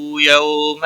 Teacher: یہ واولین ہے، تھوڑا نرمی کے ساتھ کھینچ کر ادا کریں گے